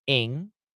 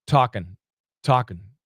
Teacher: the most common pronunciation for Americans is actually a schwa n